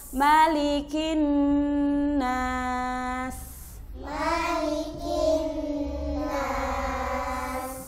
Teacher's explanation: Kaf juga ada hamasnya ya, walaupun sedikit ada hamas ki. Bukan maliki, tapi maliki ya.